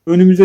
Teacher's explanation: Önümüze sözcüğünü incelediğimizde bütün ünlüler incedir. Büyük ünlüğüm uyar.